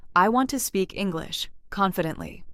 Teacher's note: The stronger words are want, speak, English, confidently. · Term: sentence stress